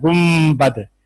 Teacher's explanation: نون کے بعد با آیا ہے تو آپ نے نون کو میم بنا کر پڑھا ہے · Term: اقلاب